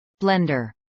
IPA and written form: ˈblɛndɚ (blender)